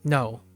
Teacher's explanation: this tone is a falling tone you can remember as a high low tone the best equivalent to English would be an emphatic statement like